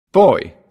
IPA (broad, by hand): ɔɪ